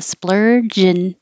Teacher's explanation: instead of saying and you can shorten and to just the in noise